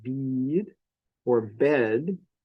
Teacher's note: So in a word like bead or bed, the vowel is long. It's like a quarter note. It's double as long as a short vowel.